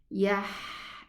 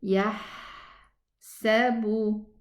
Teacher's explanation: the characteristic of the ha allows the sound and the air to run